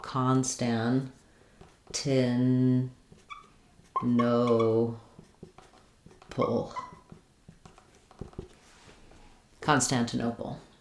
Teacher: Stress is on the O, but we have secondary stress on con, so it sounds like constan.